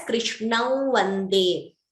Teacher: You could optionally chant it as Krishnau Vande. So you're getting the Anunasika sound there instead of the Anuswara. This again is an optional rule, and you could choose to follow it, but please be consistent in whatever you follow.